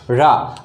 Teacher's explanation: रा में पहले हमारी जीभ मुड़ी, तालु को छुआ और छूने के बाद स्पष्ट आगे किस पे टकराई दोस्तों, मसूड़े पे टकराई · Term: लुंठित वर्ड